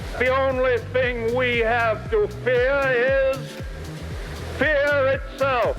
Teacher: dropping the R at the end of fear